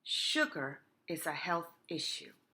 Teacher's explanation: use her lips for further friction to force the air pressure keep your lips close together and pout don't forget to pout it's a long sound similar to hushing someone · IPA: ʃ